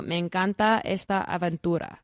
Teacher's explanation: The first is when one word ends in a letter and the next word starts with the same letter. These sounds merge, often reducing the total number of syllables.